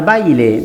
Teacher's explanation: la vocal que tiene mayor intensidad es la A, puesto que no se dice baile, sino baile. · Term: diptongo